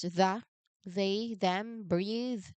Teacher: You start with the tongue between teeth position. You turn your voice on, and then you let the air hiss through into the vowel.